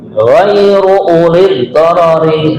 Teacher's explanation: di sini pada kalimat ghairu uli, ini kadang-kadang u-nya itu dibaca panjang. Nah, di sini yang benar dibaca pendek.